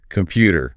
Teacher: That is a T right in the middle between two vowels. We change it to a D. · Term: soft D